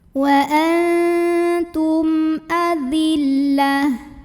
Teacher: Wa antum Lalu berikutnya di sini ada idhar syafawi karena ada mim sukun yang menghadapi huruf hamzah. Maka mim sukun dibaca secara jelas, ya. Masih bunyi M dan tidak ditahan.